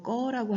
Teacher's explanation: 마찬가지로 끄다의 끄와 어가 만났을 때 우리 일반적으로 꺼라고 합니다. 끄에 있던 의가 탈락됩니다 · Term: 의 탈락